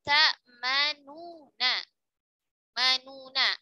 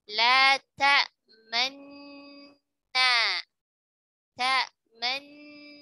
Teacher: Nun pertamanya yang berharokat dhammah dileburkan ke huruf nun yang kedua. Tapi peleburannya tidak sempurna. Karena ada ismam, masih ada isyarat harokat nun dhammahnya.